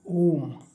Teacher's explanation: ओ जो है काफी खींचा गया तो तीन मात्राओं का बोलने का समय जहां पे लग रहा है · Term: प्लुत स्वर